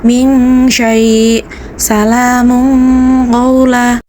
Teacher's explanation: Cara membacanya samar-samar dengan berdengung. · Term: ikhfa hakiki